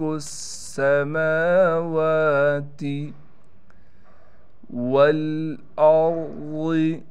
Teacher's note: میم پر کڑا زبر ہونے کی وجہ سے میم کو بھی ایک الف کی مقدار کھینچیں گے، اور واو پر بھی کڑا زبر ہونے کی وجہ سے واو کو ایک الف کی مقدار کھینچیں گے